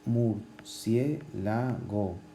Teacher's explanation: tiene el énfasis en cie, es decir, que es en la antepenúltima sílaba, con lo cual es esdrújula, y las esdrújulas sabemos que siempre llevan tilde.